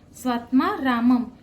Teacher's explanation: म वर जो अनुस्वार आहे त्याचा उच्चार म करायचा आहे